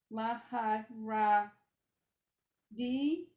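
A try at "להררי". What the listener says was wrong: No, they're both Reish. Laharari.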